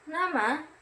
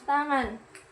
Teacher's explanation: bunyi sengau, yaitu udara keluar lewat hidung